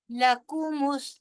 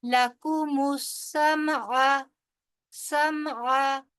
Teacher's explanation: وجعل لکمس، لکمس، لام بھی لمبا نہیں ہوگا، لام کے اوپر بڑی حرکت ہے، زبر ہے، اس لیے لام بھی لمبا نہیں ہوگا، نہ ہی کاف لمبا ہوگا. لکمس، میم آگے جا کے سین کے ساتھ ملے گا